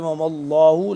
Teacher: لام موٹا پڑھیں گے، اللہ لفظ اللہ موٹا پڑھیں گے کیونکہ اس سے پہلے زبر ہے